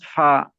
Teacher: सनाया उलिया का किनारा और निचले होंठ का अंदरूनी हिस्सा, इससे फा निकलता है।